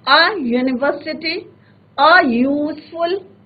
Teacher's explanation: तो एक्चुअल में यू का साउंड नहीं आ रहा है, उसमें वॉवल का साउंड नहीं आ रहा है, कॉन्सोनेंट का साउंड आ रहा है। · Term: लॉन्ग साउंड ऑफ यू